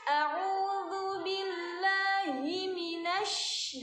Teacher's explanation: Terus yang sering terjadi lagi tuh huruf shinnya. Shinnya kan tasydid. Banyakin anginnya ya.